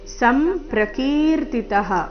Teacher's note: ವಿಸರ್ಗ ಉಚ್ಚಾರಣೆ ಅರ್ಧ ಸ ರೀತಿ ಮುಂದಿನ ಶಬ್ದ ಅದಕ್ಕೆ ಜೋಡಿಸಿ